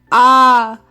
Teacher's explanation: इसका हिंदी में आकार कहते हैं और इसका उच्चारण आ मुंह को ज़्यादा बड़ा खोलकर किया जाता है। बड़ा आ को अंग्रेजी में ए या डबल ए से लिखा जाता है।